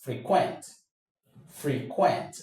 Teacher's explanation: for the verb, the stress goes to the second syllable